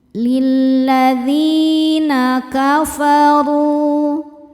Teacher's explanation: Sebab ada ya sukun sebelumnya baris kasrah. Cara bacanya panjang dua harakat. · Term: mad thobi'i zohiri